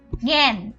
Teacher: এর উচ্চারণটা হয় গ এর মতো আনুনাসিক